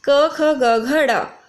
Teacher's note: क वर्ग बोला जाता है कंठ से, जिसका उच्चारण स्थान है कंठ। जैसे आप देख सकते हैं, कंठ है क वर्ग, तो ये यहाँ से निकलता है इसका उच्चारण स्थान।